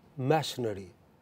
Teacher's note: This E is lost, that I, you know, in a spelling it is I, in pronunciation this is E. This E is lost. It is elided, you know. Elision has occurred, deletion has occurred. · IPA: /’mæʃnəri/